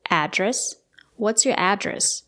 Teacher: You can stress the first syllable